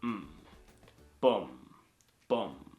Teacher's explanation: It is from low to lower. It's not a chop sound like the Mandarin one. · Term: low falling tone